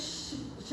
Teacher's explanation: ये श बोलेंगे तो एकदम घर्षण होती है, तो ऐसे को हम ऊष्म बोलते हैं। कई बार इसको बोलते वक्त सीटी सी बजने लग जाती है।